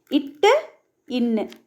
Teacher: நாவின் நுனி அன்னத்தின் நுனியை பொருந்துவதால் பிறக்கும் மெய்ெழுத்துக்கள்